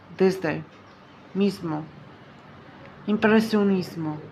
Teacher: Դ մ գ բաղաձայներից առաջ արտասանվում է մոտավորապես հայերեն Զ, բայց ավելի թույլ